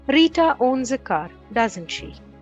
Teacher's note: a tag question with falling intonation is more of a comment than a question · we use a falling intonation when we want the other person to agree with us · The falling intonation on doesn't she here indicates that the speaker knows that she has a car.